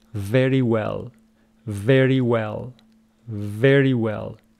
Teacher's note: The first one is a labiodental, v. The second one is a round. You say w. So you want to pronounce it correctly, you say very well.